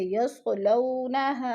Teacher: يصلو وہ ساکن سے پہلے لام کے اوپر زبر ہے، وہ لین کو ہم نے لمبا بھی نہیں کرنا اور جھٹکا بھی نہیں دینا، آرام سے ادا کرنا ہے. جیسے يصلونها، اور ہاں پہ الف مدہ ہے.